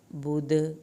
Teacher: دال کا قلقلہ کرنا ہے آخر میں